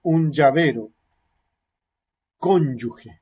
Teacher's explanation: hay una primera fase de oclusión y después una salida con fricción, y sonora, va acompañada de vibración de cuerdas vocales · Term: africada